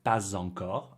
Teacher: Since living in France, I've noticed that some people make the liaison and say pa zencor, and some people don't.